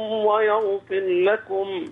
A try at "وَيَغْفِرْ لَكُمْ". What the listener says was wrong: خد بالك، ويغفر لكم الراء.